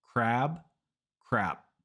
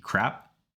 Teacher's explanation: the vowel is the same between both words there's no difference but the only difference is the length of the vowel so when you want to say crab make the vowel longer